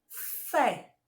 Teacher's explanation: Fé é a sílaba tônica, a sílaba que eu botei mais força para falar. Então, quando a sílaba forte, a sílaba tônica for a última, ela é oxítona.